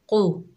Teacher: कौफ के ऊपर पेश है, बगैर खींचे पढ़ेंगे, लेकिन कौफ हरूफे मुस्ताला में से है, मोटा अदा होगा